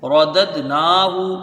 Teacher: جلدی پڑھے جائیں گے، را کے اوپر زبر ہے، یہ بھی دال کو دال سے جب ملائیں گے قلقلہ ہوگا